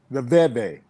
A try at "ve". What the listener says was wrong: I just don't worry about the double V. Just one V. Just V. One V.